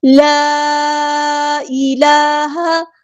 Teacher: لام پہ حرکات مد آئی ہے، 2 کاؤنٹس ہم اس کو لمبا کریں گے، مد اصلی ہو رہی ہے